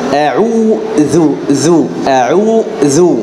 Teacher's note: الذال ويخرج من طرف اللسان مع أصول الأسنان العليا ويكون مرققا دائما لأنه مشترك في المخرج مع الظاء، ولكن الفرق بينه وبين الظاء أن الذال مرققة والظاء مفخمة، فأقول أعوذ ذو أعوذ.